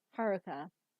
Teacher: it's ha and then the ru is less emphasized and C is emphasized again so it's Haruka versus how a